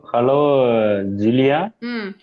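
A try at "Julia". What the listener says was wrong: ஹலோ ஜூலியா படிக்க கூடாது. ஹலோ ஜூலியா கிடையாது. ஹலோ யூலியா. ஜே வந்து வையா ப்ரொனவுன்ஸ் பண்ணும். யூலியா.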